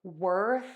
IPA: wɜrθ